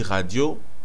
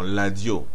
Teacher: quand on dit radio, nous, on va le vocaliser en ladio. Donc, le R est devenu L.